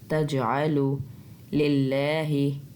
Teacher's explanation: اللہ کے لام کو باریک پڑھنا کیونکہ اس سے پچھلا جو لام ہے اس کے نیچے زیر ہے